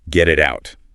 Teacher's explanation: Three distinct glottal stops. Your vocal folds snap shut 3 times.